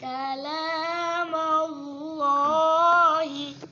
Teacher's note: لفظ اللہ کا لام ہے، اس سے پہلے زبر ہو تو اس کو خوب موٹا، سب سے خوبصورت کر کے موٹا پڑھتے ہیں